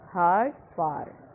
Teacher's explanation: long back spread vowel